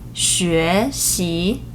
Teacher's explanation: rising tone. It starts with a low pitch and then rises